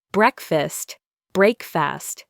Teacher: But we don't say break fast. We say breakfast. The first syllable is stressed.